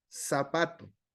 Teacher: en nuestro español decimos zapato lo pronunciamos como ese lo hacemos como sonido s no lo hacemos zapato zapato ya sería sonido Z pero en